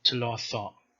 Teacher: So as a stop it is T, and after vowel it becomes Th